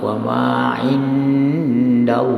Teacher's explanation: Allah lamnya itu kamu panjangkan dan ditebalkan